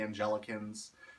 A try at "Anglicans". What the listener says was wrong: Hey, it's Anglicans. Anglicans. Anglicans. Not Angelicans. Anglicans.